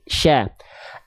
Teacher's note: Huruf shin makrojnya dari tengah lidah diarahkan ke langit-langit, disebar udara yang banyak dari mulut, namanya sifat tafasi.